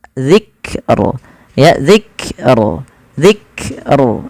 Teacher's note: Kaf ada sifatnya ketika dia sukun ada namanya sifat syiddah syiddah yaitu huruf yang dia memiliki ee sifat yaitu suaranya tertahan